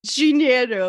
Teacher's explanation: Yes, you put like a J sound for the D, right?